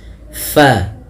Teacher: ini huruf fa salah satu sifatnya yaitu dia hams, mengalirnya nafas · Hati-hati di dalam melafalkannya, jangan sampai dia terbaca dengan fabaddala alladzi, bibir kita rapat, padahal huruf fa ada sedikit furjahnya, ada sedikit ruang yang kosong yang mana untuk mengeluarkan nafasnya